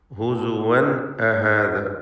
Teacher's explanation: തൻവീനിനെ ഇൽഹാർ ഹൽക്കി നൽകി മണിക്കാതെ വെളിവാക്കേണ്ടതാണ്.